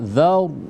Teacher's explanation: Nah, jadi sini dzaw ya, maka dibaca tebal. Dzaw disempurnakan tebalnya ya. Dzaw dengan mulut yang dimuncungkan.